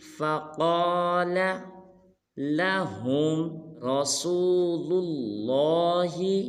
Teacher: فا کو لمبا نہیں کرنا بلکہ قاف کو موٹا ادا کریں گے اور پڑھیں گے فقال لہم رسول اللہ۔ · اس حرف کو بعض مسلمان پڑھ دیتے ہیں رسول اللہ، یہ بالکل غلط ہے۔ رسول کی را کو پر ادا کریں گے